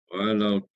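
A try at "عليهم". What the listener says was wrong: Jangan tahan. Kalau tahan macam ni. Kalau tahan. Dot tu jangan tahan. Walau. Itu tahan. Walau. Bila tahan, dia terberhenti suara dia. Huruf Dod. Sedikit pun tak boleh tahan.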